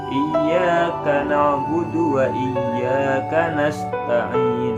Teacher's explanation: sifat hamas sinnya karena ada seperti bunyi desis-desis gitu ya